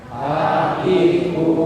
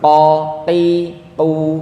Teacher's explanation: Ini huruf kaf. Sedangkan huruf qaf dia agak ditarik ke belakang.